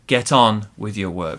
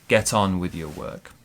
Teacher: Our pronunciation, get on with your work. We stress on. Get on with your work.